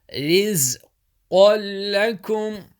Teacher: Qaf back of your mouth, join with the lam strongly.